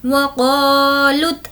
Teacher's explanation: क़ा को हमें खींचना है क्योंकि अलिफ मद्दा है। अलिफ मद्दा का मतलब होता है अलिफ जिससे पहले ज़बर हो।